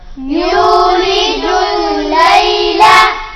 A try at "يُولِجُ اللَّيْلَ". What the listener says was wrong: يولج الليل تشدید کے ساتھ جب بھی آپ کوئی حرف ملاتے ہیں تو اس کو جلدی سے ملانا ہے، اس کو لمبا نہیں کرنا۔ یولج اللیل نہیں، یہ غلط ہے۔ یولج اللیل فوراً ملانا ہے ساتھ۔ یولج اللیل،